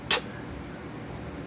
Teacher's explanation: T is a sound which is made with the tongue tip against the alveolar ridge. Alveolar has air escaping not from the nose but from the mouth.